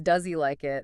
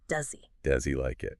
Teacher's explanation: That becomes does he like it. The h is basically gone or very very weak. The e sound from does links right into the vowel.